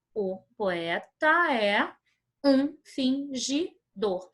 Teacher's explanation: dessa forma eu leio o poeta é um fingidor percebam que a última sílaba da palavra fingidor ela é uma sílaba tônica